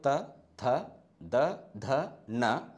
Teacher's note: ಇವು ಎಲ್ಲ ಅಕ್ಷರಗಳು ಮೇಲ್ಭಾಗದ ದಂತಿಗೆ ಒತ್ತುವುದರ ಮೂಲಕ ಉಚ್ಚಾರಣೆ ಆಗತಕಂತ ಅಕ್ಷರಗಳು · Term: ದಂತ್ಯ, ದಂತ್ಯ ಧ್ವನಿಗಳು